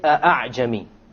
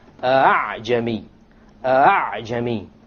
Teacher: You don't pronounce it a full hamza, and you don't pronounce it as an alif, full alif. It is in between. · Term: tasheel